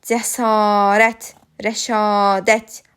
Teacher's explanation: a saitləri uzun tələffüz olunur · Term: uzun sait